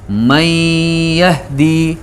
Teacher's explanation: ادغام بھی ہو رہا ہے اور غنہ بھی ساتھ ہو رہا ہے